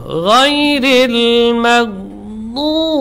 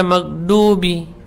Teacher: huruf dad, huruf yang keluar dari sisi lidah yang menempel pada geraham atas, ya, kiri atau kanan atau keduanya bersamaan. Jadi tekanan dan sandaran dari sisi lidah, ya.